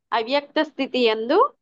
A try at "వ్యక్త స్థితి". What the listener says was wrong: వ్యక్త స్థితి ఎందు మాతాజీ, అవ్యక్త స్థితి కాదు. అవ్యక్తం అంటే కనపడనిది అనేది, వ్యక్తం అంటే కనపడుతుంది అనేది. అవ్యక్తం అంటే కనపడకుండా ఉండేది, వ్యక్తం అంటే కనపడుతూ ఉండేది.